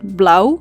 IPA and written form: blɑu (Blauw)